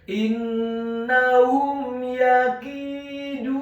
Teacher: Dalam hal ini adalah huruf ya yang fathah, maka hukum bacaannya adalah dibaca dengan jelas izhar syafawi. Tidak boleh digunahkan atau didengungkan huruf mim yang sukunnya · Kata yakiduna, huruf ya-nya dibaca tipis, tarqiq fathah 1 harokat. Huruf kafnya dibaca tipis, kasrah 2 harokat karena setelahnya ada huruf ya sukun. Huruf dalnya dibaca tipis, tarqiq dhammah 2 harokat karena setelahnya ada huruf wawu sukun.